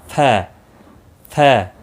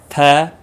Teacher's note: اوپر والے دانت ٹچ کرنے ہیں نچلے ہونٹ کے اوپر، ف اور چھوڑ دینے ہیں.